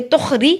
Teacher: را کو باریک پڑھیں گے، را کے نیچے زیر ہے